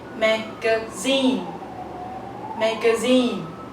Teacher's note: according to the dictionary, the stress falls on the third syllable · So you raise your voice in the third syllable. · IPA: mæ-ɡə-ˈziːn